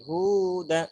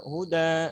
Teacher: yang panjang adalah hu-nya. Sedangkan yang kedua huda. Nah, jadi yang panjang da-nya.